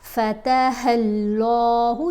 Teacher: لام کو ہم نے موٹا پڑھنا ہے اور لمبا بھی پڑھنا ہے۔ اللہ کی لام کو پڑھنے کا اصول یہ ہے کہ اس لام سے پہلے حرف کے اوپر زبر یا پیش ہوگی تو یہ لام کو، اس لام کو موٹا پڑھیں گے۔